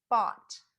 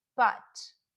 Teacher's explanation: Both sounds are relaxed with the tongue flat, but the short O is in the back and the short U is in the middle. Also, the jaw is lower for the short O and a little more raised for the short U.